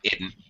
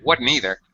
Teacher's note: The change of S to D before N is spreading throughout the U.S.